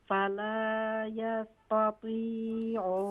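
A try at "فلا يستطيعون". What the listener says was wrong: फला यस्ततीऊन। तवज्जो कीजिए कि यहाँ देखिए ता और क़ा दोनों एक साथ पर हैं, एक साथ में है। तो ता को लाइट करेंगे, क़ा को फुल माउथ करेंगे। ता को मत खींचे। फला यस्ततीऊन।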